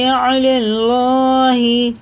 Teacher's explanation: अल्लाह का नाम जब ज़बर के साथ होता है तो पूरा होता है, मोटा भर करके पढ़ते हैं